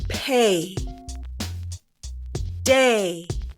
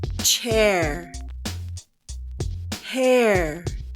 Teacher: hear the difference between the long a and open a